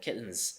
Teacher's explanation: the final consonant of the word kittens is Z which is voiced and alveolar